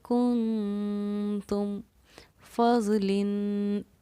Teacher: یعنی خفیہ طور پر ناک میں آواز کو رکھنا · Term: اخفا